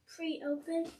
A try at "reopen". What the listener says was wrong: Nope, it doesn't say pre-open. How about re?